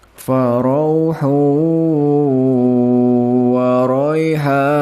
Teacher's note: ada pertemuan dammah tanwin dengan huruf wawu. Ini adalah bacaan idgham bighunnah